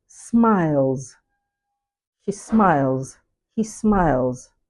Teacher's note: What follows next is the nucleus, which is the rising diphthong, which is closely followed by the coda, also made up of two consonants, the lateral sound and the voiced alveolar fricative